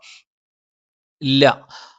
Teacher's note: നാവിൻറെ അറ്റം മേലെ മുൻപല്ലിന്റെ മോണയിലാണ്